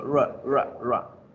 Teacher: la r al principio de las palabras suena suavecito